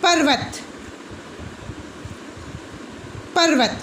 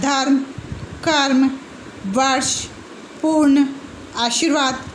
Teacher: पर्वत, पर्वत, तो र तो स्वर रहित हो गया, वह जो है हमारे पास पूरा है, वह स्वर सहित है, और र का जो उच्चारण हो रहा है वह स्वर रहित हो रहा है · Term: स्वर रहित र